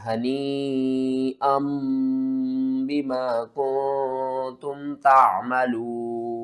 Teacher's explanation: جو حمزہ دو زبر ان کے بعد نون کی آواز آ رہی ہے نا اس کو آپ نے میم کی آواز میں بدل کر پڑھنا ہے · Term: اقلاب